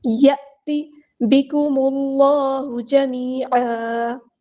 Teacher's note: میم کو ہم نے لام کے ساتھ ملا دے رہے ہیں، حمزۃ الوصل ہمارا ڈراپ ہو جائے گا. اللہ کا جو لام ہے یہاں پہ پر یعنی ہے بھی پڑھا جائے گا، بکم اللہ نہیں پڑھنا، بکم اللہ جمیعا.